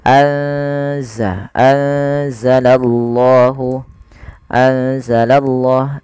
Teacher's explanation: memasukkan nunnya atau menyamarkan nunnya kepada huruf zai ya. Anza langsung kepada makhraj daripada huruf z. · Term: ikhfa